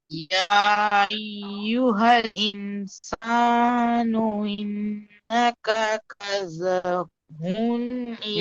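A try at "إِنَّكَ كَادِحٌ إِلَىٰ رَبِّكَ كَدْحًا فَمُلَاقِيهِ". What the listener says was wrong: ইন্নাকা ইন্নাকা কাদিহুন, ইন্নাকা কাজহান বলছেন কাদিহান, কাফ আলিফ, এক আলিফ মধ্যে একটা টান দিয়ে পড়েন, কাদিহুন ইলা রব্বিকা কাদহান ফামুলাকি, বলেন। প্রথমে যে ইয়া আছে, ইয়াটির মধ্যে মুনফাসিল তিন আলিফ টান হবে। ইয়া আইয়ুহাল ইনসানু,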